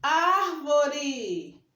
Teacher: a sílaba tônica é o ar e é acentuada